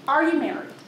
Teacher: full interrogative syntax rising intonation